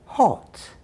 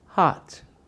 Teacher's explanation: Did you hear the difference? I said O. And I said ah. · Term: lot vowel